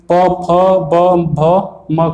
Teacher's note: का उच्चारण ओठ से होता है